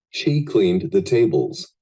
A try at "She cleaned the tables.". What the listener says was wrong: Muy leve. En este caso es pasado, cleaned. No es lo mismo decir clean a decir cleaned. Tiene un golpecito de D.